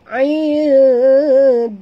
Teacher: nun mati bertemu dal, ikhfa hakiki, sorok dan dengung dekat sini. Jadi lidah kita berada di tengah-tengah rongga mulut. Dia tak ke atas, tak ke bawah.